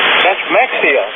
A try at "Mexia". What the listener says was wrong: No, X is pronounced as a H. I said Mahia. That's the proper pronunciation.